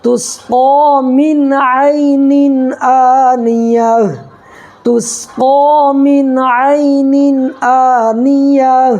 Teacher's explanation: یہاں بھی دیکھیے 2 زیر کی تنوین کے بعد حروف حلقی کے 6 حرفوں میں سے حمزہ آ رہا ہے، اس لیے یہاں پر ظاہر کر کے پڑھیں گے، نون کی آواز کو ظاہر کر کے پڑھیں گے، اس کو اظہار کہتے ہیں